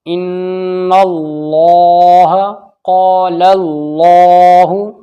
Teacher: اللہ کے لام سے پہلے زبر آ گیا، موٹا پڑھا جائے گا